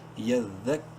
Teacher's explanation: دال اور کاف دونوں کو سختی سے پڑھیں گے، مشدد حروف ہیں